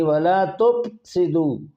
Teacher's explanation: فا کا مخرج ہے نیچے کے ہونٹ کا شکم یعنی پیٹ، اور اوپر کے دانتوں کا کنارہ یہ، یعنی وَلَا تُفْسِدُوا، فے کو پے نہیں پڑھنا، یہ عجمی حرف نہیں پڑھنا، یہ 3 نقطوں والا۔